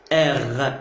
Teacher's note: l'uvule va s'appuyer sur le dos de la langue et ça va vibrer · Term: la consonne R